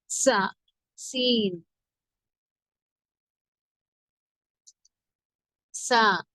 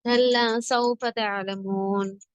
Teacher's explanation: நுனிநாவின் மேல் பகுதி மேல் கீழ் பற்களுக்கு இடையில் இணையும் போது உண்டாகும். குரல் மெல்லியதாக இருக்க வேண்டும்.